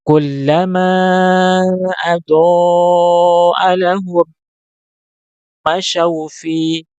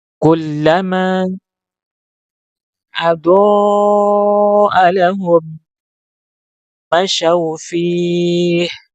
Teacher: kita harus mengatur suara sehingga kemudian ada suara yang mengalir dan berbunyi ha sukun. Ya, maka kita baca seharusnya adalah kullama adahum masyau fih.